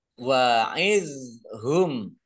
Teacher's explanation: dok sukun ini bukan kolkola, jangan dipantulkan.